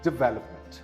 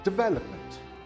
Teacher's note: The second syllable is the one that is stressed.